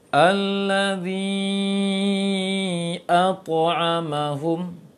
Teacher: terlalu menekan suara mat sehingga keluarnya dari hidung sehingga sengau jadinya, maka mengambil sifat gunnah jadinya.